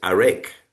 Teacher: In the Armenian language, the stress is put on the second syllable.